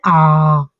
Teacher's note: जिसमें ज्यादा मुंह खुलता है सबसे ज्यादा वो होते हैं विवृत